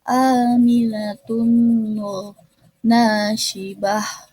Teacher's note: ada idgham bigunah, yaitu dibacanya dengung karena tanwin bertemu dengan huruf na